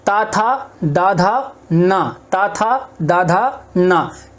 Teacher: देखो ता, था, दा, धा और ना, ता, था, दा, धा, ना, इनको जब तुम उच्चारण करोगे इनका, तो तुम्हारी जीभ जो है वो कहां टकराएगी, जीभ टकराएगी तुम्हारी ऊपरी वाले दांतों से